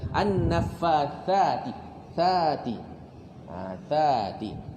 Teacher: Itu ada huruf sa. Huruf sa kena keluar lidah sedikit. Lidah tu hujung lidah tu letakkan atau juluk, letakkan ke gigi atas.